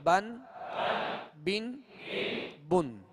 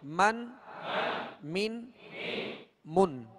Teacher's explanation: با کا جو مخرج ہے وہ دونوں ہونٹوں کے تر حصے سے، اور میم کا جو مخرج ہے وہ دونوں ہونٹوں کے خشک حصے سے ادا ہوتا ہے، یعنی بالکل قریب قریب ہیں اور دونوں کا تعلق ہونٹوں سے ہے۔